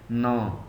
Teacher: ऐसा व्यंजन जिसे नरम तालु को नीचे लाकर उत्पन्न किया जाए, जिससे मुख से वायु निकलने पर अवरोध हो लेकिन नासिकाओं से निकलने की छूट हो। अर्थात उनका उच्चारण जब हम करते हैं तो ये समझ लीजिए कि हम नाक से ही उच्चारण करते हैं।